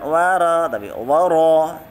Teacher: Wara, ra-nya tebal ya, tafkhim. Wara bukan wara tapi wara.